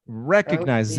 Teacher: And the stress syllable is the first syllable.